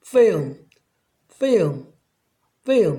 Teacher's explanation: L 다음에 자음이 오게 되면 L을 자음 리을로 발음하시면 안 되고 반모음인 으 발음을 하시면 됩니다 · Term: L의 반모음